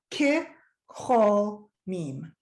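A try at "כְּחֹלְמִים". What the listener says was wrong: Actually, I'm going to question. It's Kecholamim. Because the shva is first and it's going to break the syllable. Kecholamim. But again, Et Shivat Zion Hayinu Kecholamim. So it's a quick one.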